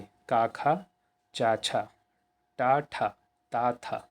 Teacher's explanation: किसी भी वर्ग का पहला और दूसरा वर्ण हमेशा अघोष कहलाता है